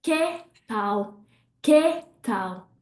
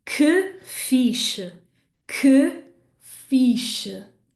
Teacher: So hopefully you can hear that those two E's at the end of que and fiche, they happen in my throat.